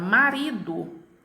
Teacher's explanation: a minha penúltima sílaba ri, eu tenho a pronúncia dela com maior intensidade. Então, nesta palavra marido, a sílaba tônica é a sílaba ri.